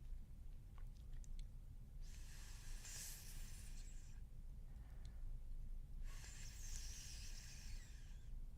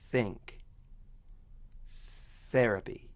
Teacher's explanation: All that's happening is air is being pushed past the tip of the tongue and the upper teeth. You don't have to hold any tension anywhere in your face for this sound.